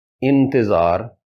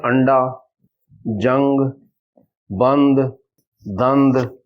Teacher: نون نی آواز نہ اخفاء کرساں، یعنی چھپاساں، نک نے بانسے وچ اور 2 حرکات لمبا کرساں